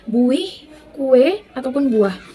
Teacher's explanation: namun pada saat kita ucapkan terdengar seperti ada tambahan W di antara U dan I, maka terdengar seperti buih. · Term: alofon